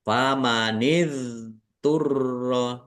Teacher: roknya ada tasdidnya, dibaca double, ditekan dan ditahan biar tampak double